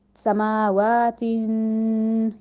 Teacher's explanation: تین کو تیزی میں تین کر کے نہیں پڑھنا، وہاں پہ رک کے ناک میں آواز لے کے جا کے پھر آگے جانا ہے. سماواتن اس طرح رکے اور نون کی ساؤنڈ ہم ناک میں لے کے گئے، ایسے پڑھا ہم نے وہاں پہ.